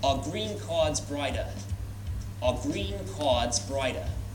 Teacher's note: an R sound in New York is only pronounced when it's before a vowel